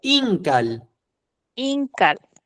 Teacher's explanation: Pronuncia fuerte en el in